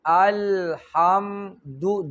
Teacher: دال باندې پیش چې شونډې به ګول شي